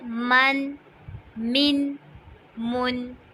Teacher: ناک میں آواز تھوڑی لے کے جانی ہے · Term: غنہ